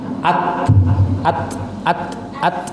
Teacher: Maka ketika sukun, huruf ta ini dia ada percikan udara yang keluar. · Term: sifat Hames, sifat hamas